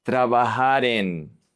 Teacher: The R is going to connect to the E. Trabajar en.